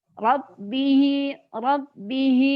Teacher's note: jadi agak terdengar kayak cadel tapi tetep ada takril nya tetap ada getarannya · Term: makhorijul huruf roknya, takrirnya